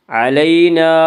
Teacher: علینا، الف مدہ، الف ہمیشہ مدہ ہوتا ہے، الف سے پہلے ہمیشہ زبر ہوتا ہے، الف مدہ کو 1 الف کے برابر کھینچ کر پڑھیں گے۔